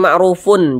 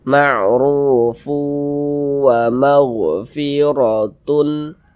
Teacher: tanwin itu masuk ke huruf wau melebur ke huruf wau Ma'ruf kemudian kita gunahkan kita dengungkan jadi suara itu kita tahan kita panjangkan sejenak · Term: ghunah